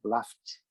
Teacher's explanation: Se terminar com o som de F, você vai pronunciar T no final. O ED vai ser pronunciado como T.